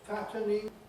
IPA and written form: ˈfætənɪŋ (fattening)